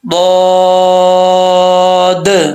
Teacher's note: ضاد کے آخر میں بھی دال آتا ہے، تو اس دال میں بھی قلقلہ ہے